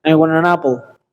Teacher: The letter T disappears at all, and the letter N and the letter A merge with each other. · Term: linking words